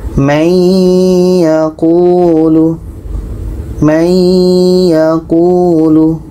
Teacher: nun mati bertemu ya, dengung.